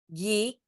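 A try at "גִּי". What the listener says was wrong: Gi. It's a gimel. Gi.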